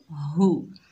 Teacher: इसे मारूफ मुतवस्सित तरीके से पढ़ेंगे, बगैर खींचे